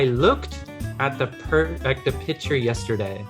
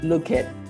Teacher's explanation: So you quickly roll the K sound into the T sound.